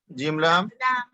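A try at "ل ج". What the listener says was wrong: पहले यहाँ पर पहले लाम है फिर जीम है, ठीक है। जीम लाम नहीं बल्कि लाम जीम, पहले लाम पढ़िए फिर जीम पढ़िए।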